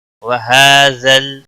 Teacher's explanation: لام ہا کے اوپر کھڑی زبر ہے، 1 الف کے برابر کھینچ کر پڑھیں گے